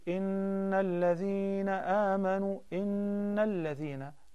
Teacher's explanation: that's noon مُشَدَّدَة so there is a ghunnah two counts